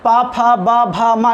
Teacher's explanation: पवर्ग का, पा, फा, बा, भा, मा, इनका उच्चारण स्थान ओष्ठ है ना। बगैर ओष्ठ के आप इसका उच्चारण नहीं कर सकते हैं, बगैर होठ मिलाए उच्चारण करके दिखाइए वाला, पा नहीं कर सकते हैं।